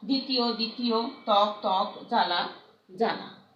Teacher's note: শব্দের আদ্য বফলা অনুচ্চারিত থাকে।